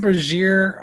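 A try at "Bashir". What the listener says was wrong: There's only an R at the end.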